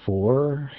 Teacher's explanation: a vowel influenced by the letter R it's not quite a long o or a short o